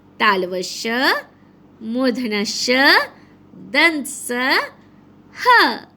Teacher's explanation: इन्हें बोलते समय वायु मुख से घर्षण करती हुई निकलती है। फलस्वरूप सीटी जैसी आवाज आती है। ये भी संख्या में 4 है। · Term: ऊष्म व्यंजन